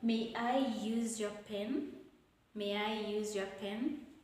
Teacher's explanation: when making a request you're not supposed to use the rising one it's supposed to fall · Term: falling intonation